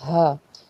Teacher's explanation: ہا حروف حلقی کا حرف ہے، حلق کے نچلے حصے سے سینے کی طرف سے اس کو ادا کرتے ہیں، ہا۔